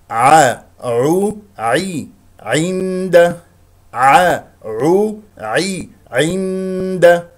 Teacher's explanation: لا تختلس كسره العين